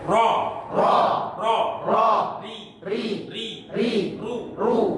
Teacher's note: Walaupun ro itu berharokat fathah, kasroh, dhammah maupun sukun, tetap dia 2 getaran selamanya, ya tetap 2 getaran, tidak boleh dikurangi atau ditambahi, ya pas ukurannya hanya 2 getaran itu. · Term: sifat takrir